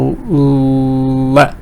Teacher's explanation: Air is going from the left of your tongue, from the right of your tongue. So the tongue is blocking the middle, but then from the sides, air can go through and out of your mouth. So you say le. · So you say le. From the sides, the air is going out because you're blocking the middle part of your mouth using your tongue. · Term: le sound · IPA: /l/